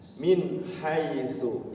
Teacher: Min hak, jangan min hak, jangan ditahan. Tidak dengung tapi dijelaskan, izhar harus jelas.